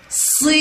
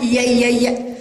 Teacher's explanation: الياء الأولى في كلمة صينية هي التي بها مد وتمد ككسرة قوية لأسفل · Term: المد بالياء